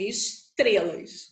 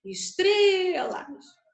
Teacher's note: Então, a sílaba de força é o tré.